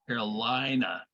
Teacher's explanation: in more traditional, typical English accents that are not regional, it would have the diphthong of I, like the letter I